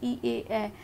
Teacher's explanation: সম্মুখ স্বরধ্বনি হচ্ছে জিভের সম্মুখ ভাগ দ্বারা উচ্চারণ সংগঠিত হয়